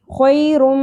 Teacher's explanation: میم مشدد کو تنوین سے ملاتے ہوئے, حروف یمنو میں سے ہے نا میم, تو ہم یہاں پہ ملائیں گے بھی اور ادغام کرتے ہوئے غنہ بھی کریں گے. خیرم, ملایا بھی ہم نے اور ٹھہرے بھی, آواز کو ناک میں ٹھہرایا بھی ہے